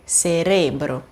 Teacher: a sílaba tônica é re